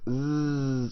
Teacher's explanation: These letters are called the whistle letters, huruf as-safir, and they're called the whistle letters because they have this hissing sound.